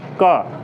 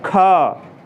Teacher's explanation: का को बोलने में हम कम समय लगाए लेकिन खा को बोलने में ज़्यादा समय लगाए